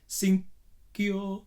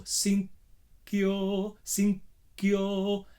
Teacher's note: The N is at the back, very short N, because you need to stop the G.